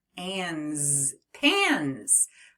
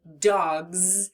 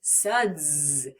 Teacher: You read 4 words that all end with the buzzing S sound. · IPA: /z/